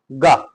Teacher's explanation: अल्पप्राण और सघोष दोनों है